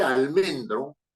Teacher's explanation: el golpe de voz más fuerte, el que identifica la sílaba tónica es men, almendro. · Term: grave o llana